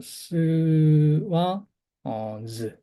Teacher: 그다음에 또 마지막으로 또 자음 남은 거를 보면은 마찰음 그냥 스랑 스를 좀 울리면서 발음하면 어떻게 되죠? 즈 발음이 되겠죠. 그래서 즈 발음이 됩니다.